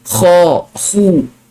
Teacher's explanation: Tapi kalau kha baris atas atau baris depan, dia jadi isti'la. Kha terangkat pangkal lidah. Kha, khu.